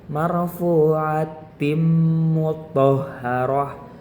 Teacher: suara nun atau tanwin ketika masuk kepada huruf-huruf berikutnya itu tanpa terdengar jelas bentuk aslinya, tetapi masih dengan dengung yang lembut